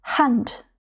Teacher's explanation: І якщо вона стоїть на початку слова перед голосною, то ми вимовляємо її трохи м'якше, ніж українську х